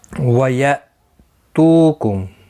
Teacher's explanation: وَيَأْتُكُمْ تو واو مدہ ہے، حمزہ ساکن کو تھوڑا جھٹکے کے ساتھ ادا کریں گے. تو واو مدہ ہے، 1 الف کی مقدار کے برابر کھینچ کر پڑھیں گے.